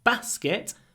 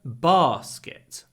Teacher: in the north it's a basket short sound Basket in the South it's a basket a double sound